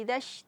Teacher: Idzash, di sini idzash, tidak boleh idzash, karena shin makhrajna, tempat keluarnya dari tengah lidah, bukan dari dua bibir